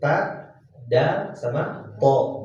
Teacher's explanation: Karena si ujung lidahnya itu nempelnya ke pangkal dua gigi seri atas. Tempat tumbuhnya dua gigi seri atas. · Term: nitiyah